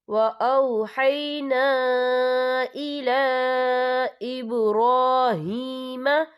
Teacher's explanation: لام کے اوپر کھڑی حرکات ہے اور اس پر چھوٹی سی مد ہے، تو یہاں بھی 3 یا 4 حرکت کے برابر کھینچ کر پڑھا جائے گا